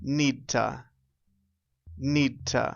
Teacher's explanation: we take the T sound and we put it on the previous verb